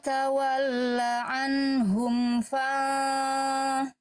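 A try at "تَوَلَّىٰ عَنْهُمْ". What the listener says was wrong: Kurang tebal lagi ikhfanya ya.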